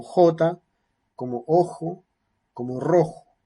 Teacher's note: produce una estrecha se reduce la zona de la frick activa con forma de fricción y sin vibración de cuerdas vocales